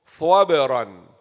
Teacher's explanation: This ra will be thick, full mouth. Why? Because it is maftuh.